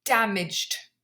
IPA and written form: dæmɪʤd (damaged)